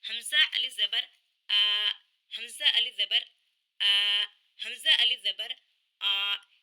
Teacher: یہ اقصی حلق کی آواز ہے، اقصی حلق کا حمزہ ہے،